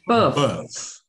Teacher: 你这个▁b▁这个发音要重一些，不是▁p